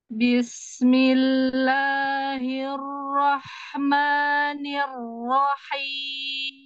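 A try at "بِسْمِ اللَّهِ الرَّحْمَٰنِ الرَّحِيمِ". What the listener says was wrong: Ini rahimnya udah bagus, tapi hirnya monyong. Bisnya kasih hamas sama ini sama roha. Bis, jadi dia kayak gini. Bis, bis, bis. Makanya kayak senyum, tapi dia biar dapat rohnya. Bis, bismillahil, pas hirnya naikin. Hil, dari sini hil roh, gitu. Rohnya naik ke H.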